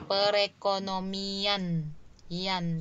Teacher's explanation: Jadi di depan dia ada penggeseran kemudian ada penambahan fonem luncuran Y.